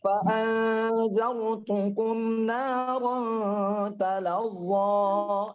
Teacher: Bacanya itu namanya izhar, harus jelas. Syafawi di bibir, jelas di bibir. Karena huruf mim itu yang harus di mulutnya. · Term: izhar syafawi